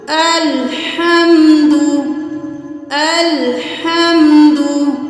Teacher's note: दाल पेश तू, उसके आगे कुछ भी नहीं है, तो हम इसको जल्दी से अदा करेंगे